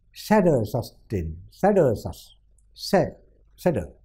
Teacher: Se has stress, and der and sus doesn't have